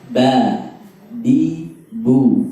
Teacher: Ba, bi, bu, tidak mengeluarkan nafas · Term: jahar